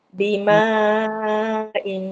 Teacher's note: Tanwin tu dia terus masuk ke mim lah. Tutup mulut Ustazah.